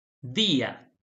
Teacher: Fíjense que levanto la voz en la penúltima sílaba